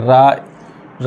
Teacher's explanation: लुंठित का अर्थ भी वही है, वाइब्रेशन है, कंपन होना। तो जिस वर्ण को बोलने में जिह्वा की नोक पर क्या हो, वाइब्रेशन हो या कंपन हो, उसे हम क्या कहेंगे, लुंठित व्यंजन कहेंगे।